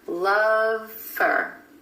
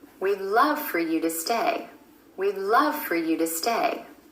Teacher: Notice how that word for reduces to fur.